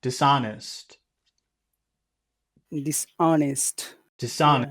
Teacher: And dis doesn't really have any power.